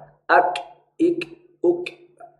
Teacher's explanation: Kaf mungkin mirip dengan huruf K di dalam huruf alfabet, tapi huruf kaf ada percikan nafas, terutama kalau dalam kondisi sukun.